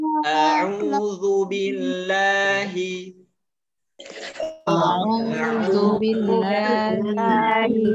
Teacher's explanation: za makhrajnya ada di ujung lidah, bertemu ujung gigi depan yang atas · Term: huruf za